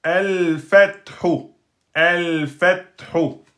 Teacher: On a un lem qui porte sousun. Donc c'est un lem lunaire donc il va se prononcer tout le temps